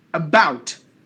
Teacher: we give more volume to about the second part than the first part